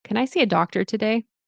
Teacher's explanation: So, rising tone for the question.